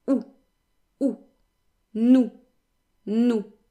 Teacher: The S is silent and the OU is a short, stable sound. It sounds a little bit like two O's in English, OU, but without the gliding. In other words, OU is a sound that kind of moves, whereas OU is just one quick sound that does not change.